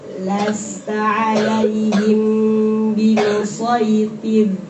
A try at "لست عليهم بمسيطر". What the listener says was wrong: Ulangi T-nya jangan lupa tebal.